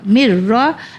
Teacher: میم کو رو میں ہم نے جوائن کیا کیونکہ ادغام کا قانون آ گیا